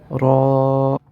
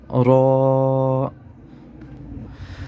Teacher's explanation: زبان کو جو ہے وہ وائبریش نہیں ہونے دیں گے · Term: را موٹا